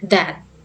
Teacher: The third is dental. Dental produced by touching the upper front teeth with the tip of the tongue. Dental sounds involve the upper teeth as the passive articulator and the tip of the tongue as the active articulator.